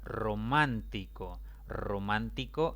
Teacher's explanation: a tildar sé romántico romántico es una palabra de cuatro sílabas la mayor intensidad recae en la antepenúltima